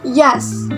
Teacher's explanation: Tongue rises to hard palate but not too close.